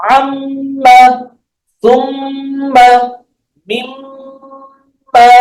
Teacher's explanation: kalau mim selain merapat kedua bibirnya, di rongga hidungnya juga ada tempat keluarnya angin, sehingga suaranya mendengung atau gunah bahasanya di rongga hidung kita